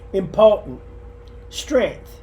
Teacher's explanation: We often drop the T in sentence, so it becomes sentence.